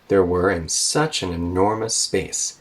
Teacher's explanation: enormous space such an enormous space now we're done talking or we're done with that sentence at space so we go down with kind of a falling tone